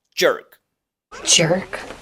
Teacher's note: Y enseguida tenemos un sonido muy característico del inglés que se llama E abierta redondeada. Este sonido es una E como del español, pero redondeada. Los labios se extienden hacia afuera como boca de Trump.